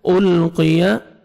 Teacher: القیا قاف کو موٹا کر کے پڑھیں گے